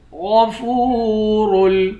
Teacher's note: غین کو موٹا پڑھیں گے، فا کو واو کے ساتھ ملا کر واو کو ایک الف کے مقدار کھینچ کر پڑھیں گے، را کو واو کے ساتھ ملا کر را کو موٹا پڑھیں گے، دال کو واو کے ساتھ ملا کر واو کو ایک الف کے مقدار کھینچ کر پڑھیں گے۔